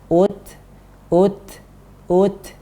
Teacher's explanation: himinas syaiton nirojim Hai menyusui Hai Put lu Hai ucbrowser naik di sini ada tertahan dan ada angin untuk huruf ta